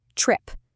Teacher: The T sound isn't t. No, it's a sharp little blast of air. Put your hand in front of your mouth and say it.